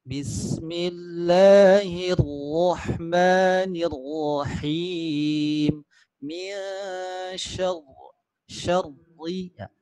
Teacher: Nah, getarnya ada nampak ya. Tapi saat bertasydid ra itu getarnya harus samar.